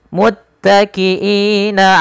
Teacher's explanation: bacaan Mad ar sukun boleh memanjangkan dengan dua harakat boleh empat boleh pula enam harakat